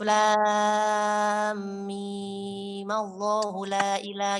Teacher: selanjutnya mim diberi harokat fathah bukan kasroh demi untuk menjaga tafhimnya atau tebalnya lafaz jalalah